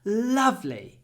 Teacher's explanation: I always try to stretch the L